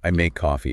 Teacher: The O sound in coffee stretches out.